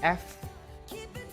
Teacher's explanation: there's a like continuous air coming out between the teeth, upper teeth and the lower lip.